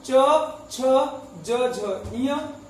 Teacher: च वर्ग का उच्चारण तालु से होता है